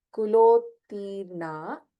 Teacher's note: Kulottirna, ta and ta in that Alpa Prana, both are Alpa Pranatas.